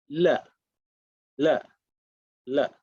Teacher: dental, which is your tongue touches the top of the teeth behind it.